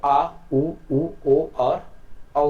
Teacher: पश्च भाग से आ उ ओ और औ की उच्चारण होता है।